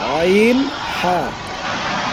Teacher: তো দুই নম্বর মাখরাজ আমরা শিখলাম কণ্ঠনালীর মধ্য হইতে উচ্চারিত হয় আইন হা, গলা চিপে আইন হা